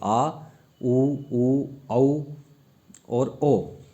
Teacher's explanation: जबकि बाकी जो बचे आ, ऊ, औ और ओ, ठीक है, इनको बोलने के लिए जीभ के पश्च भाग का यूज़ होता है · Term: पश्च स्वर